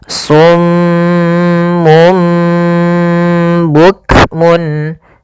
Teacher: Kemudian karena ia bacaan iqlab, maka di sini mimnya dianggap kita matikan. Maka pertama ditahan dulu suara m-nya karena dibacaan gunnah. Kemudian ketika lafal mum itu langsung matikan di sini dan ditahan suara gunnahnya.